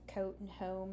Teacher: I'll come out with a nice New Jersey or Philadelphia sounding uh o sound and I say it in my nose